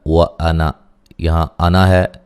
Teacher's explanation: انا کے نون کے جو آگے الف ہوتا ہے اس کو نہیں پڑھا جائے گا